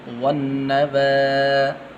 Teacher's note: واو کو آگے نون کے ساتھ ملانا ہے، یہ الف درمیان میں گر جائے گا